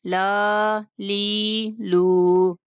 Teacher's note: لام کی آواز میں ناک میں نہیں جانے دیں گے، لا لی لو، منہ کھول کے پڑھیں گے، لا لی لو۔